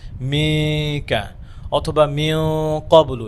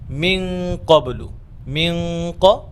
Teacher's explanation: আমরা কাফের সাথে কাফের মাখরাজের সাথে আমরা গুন্নাটা সংযোগ করে দিব, জয়েন করে দিব।